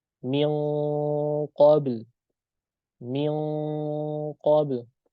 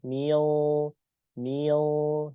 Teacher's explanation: Adapun huruf qaf yang naik ke langit-langit itu juga bukan ujung lidah, tetapi pangkal lidah langsung tempelkan ke huruf qaf